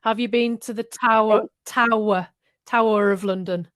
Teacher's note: Tower of London, because R is linked to of. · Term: linking R